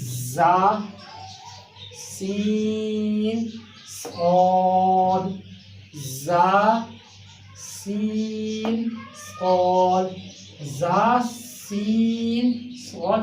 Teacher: अदा हो रहे हैं जबान की नोक और ऊपर वाले दांतों के किनारे से।